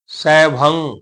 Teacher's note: ਗਗ ਦਾ ਉਚਾਰਨ ਨਹੀਂ ਹੋਣਾ ਨਾਸਕੀ ਆਵਾਜ ਆਏਗੀ ਨੱਕ ਦੇ ਦੇ ਵਿੱਚ ਆਵਾਜ ਆਏਗੀ ਸੈਭੰ ਜਿਵੇਂ ਜਿਨਾਂ ਸੰਗਤਾਂ ਨੇ